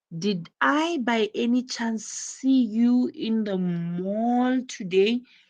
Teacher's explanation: the rising intonation, which is used in yes, no question to confirm that something is true.